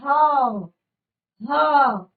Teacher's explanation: जो वायु है वो गर्म हमारे मुख से आती है और इसीलिए हम इसे कहते हैं ऊष्म व्यंजन। तो तीन तरह के व्यंजन, जिस तरह से तीन तरह के स्वर हमने यहाँ पर पढ़े थे, बिल्कुल उसी तरह से तीन तरह के व्यंजन भी हमने यहाँ पर पढ़े और ये मैंने केवल यहाँ पर आपको परिभाषा बताई है।